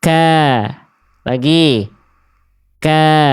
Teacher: Jadi kaf huruf tipis pangkal lidah terhampar. · walaupun makhraj kaf pangkal lidah dia tetap huruf tipis karena ketika berharakat pangkal lidahnya terhampal ya.